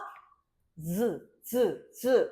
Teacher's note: 단단한 입천장에서 나는 소리로 이 친구는 파열음과 마찰음 사이에 파찰음이다